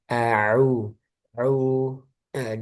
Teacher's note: A-nya lebih ditekan lagi. Au. Au. Di tengah tenggorokan ya.